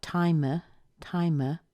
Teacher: it is usually reduced so we take out that I there we're going to put a schwa in there that's that little uh